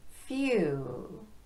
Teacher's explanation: The word few doesn't have a dark L at the end. It ends on the lips.